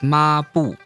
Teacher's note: A fourth tone starts right about where a first tone would start and end. So it's not ma and then bu.